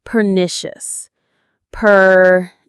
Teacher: The stress is on that middle syllable, nish.